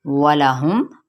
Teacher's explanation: واو کی حرکت کو نہیں لمبا کریں گے، نہ ہی لام کی حرکت کو لمبا کیا جائے گا، اور ہم میم پر اظہار شفوی ہے۔